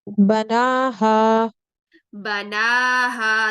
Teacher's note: Nasal sound नहीं आनी चाहिए, जौफे दहन में रहना चाहिए आपका। ना, बना हा नाक को बंद करें फिर पढ़ें।